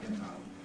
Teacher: Get at the end of that first word with a glottal stop. Get out.